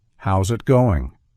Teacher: notice how the ending s Blends smoothly into the beginning of the next word · In both of these sentences, the S transforms into a Z sound when paired with a following vowel. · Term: linking, linking the S sound